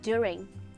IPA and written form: dʊrɪŋ (during)